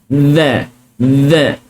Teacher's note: hujung lidah ditekan ke gigi kacip sebelah atas